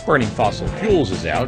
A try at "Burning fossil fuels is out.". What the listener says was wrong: 네, fuels is out. 네, fuel is out. 이렇게 끊으시면 안 돼요. fuels is out. 그리고 연료 발음은 fuel이 아닙니다. fuel. 이 발음이에요.